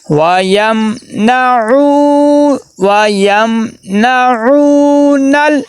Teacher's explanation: آگے عین کے آگے واو مدہ آ گئی ہے، واو مدہ کو 1 الف کے برابر لمبا کر کے پڑھیں گے. وَيَمْنَعُونَ نون کو لام کے ساتھ ملائیں گے اور لام کو دیکھنا کلکلا نہیں ہونا چاہیے بلکہ آواز رک جائے.